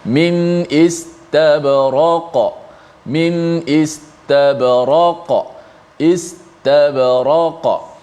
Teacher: Jangan istabraka, jangan tukar, jadi nipiskan qaf jadi kaf, ataupun seperti qaf tu ada sabdu, itu qalqalah yang paling tinggilah, kubra. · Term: huruf qaf